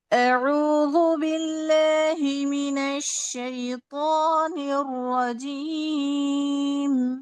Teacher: باللہ میں لام کو باریک پڑھیے.